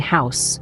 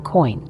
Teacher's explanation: They're a combination of two vowel sounds within the same syllable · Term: diphthongs